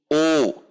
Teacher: Selanjutnya dhammah U dengan membulatkan bibir.